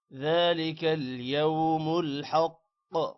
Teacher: قاف پر قلقلہ ہوگا.